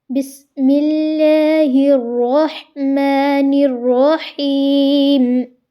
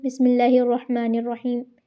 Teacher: میں نے ہا کو پرومیننٹ واضح کر کے ادا کیا درمیان والے حلق کے حصے سے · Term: مخرج